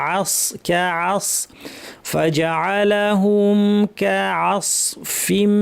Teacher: তানবিন গিয়ে মিমকে ধরবে, মিম তার লম্বা গুণনা